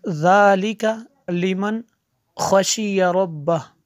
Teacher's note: یہاں پہ غنہ نہیں کر سکتے کیونکہ نون ساکن کے بعد خا حروف حلقی میں سے ہے